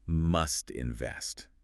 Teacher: For a formal example, even in a formal speech, a politician might say, the government must invest in infrastructure. The final T sound of must will likely blend seamlessly into the vowel sound in invest.